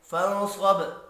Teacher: نون ساکن کے بعد صاد ہے، اخفاء حقیقی ہوگا، صاد پر پڑا جائے گا، وف کی صورت میں با ساکن پر قلقلہ کرنا ہے۔